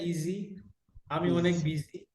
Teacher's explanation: জায়ের মাখরাজ কোথায় লাগবে? জিহ্বার টিপ, সামনের নিচে দাঁতের গোড়া।